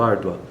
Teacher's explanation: A sílaba tônica, ou seja, a sílaba mais forte que nós pronunciamos com mais força ainda em toda a palavra é ar. Então, árdua, tanto que é acentuado, árdua.